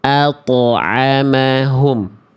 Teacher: ketika to dalam keadaan sukun itu jangan sampai tidak dipantulkan. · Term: qalqalah